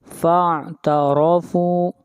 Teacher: را کو یہاں پر موٹا پڑھا جائے گا، را کے اوپر زبر ہے